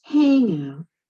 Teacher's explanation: you can hear that first syllable stress, that's a compound noun